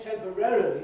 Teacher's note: you do say all the syllables that are there, but you ease the matter by moving the stress later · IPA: [ˌtempəˈrerəli]